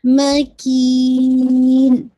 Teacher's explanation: مکین کی کو کرتے ہوئے پھر آپ نے لاسٹ میں نون کا جو جزم ہے اس کو آپ نے واضح کرنا ہے ٹھیک ہے. مکین ٹھیک ہے.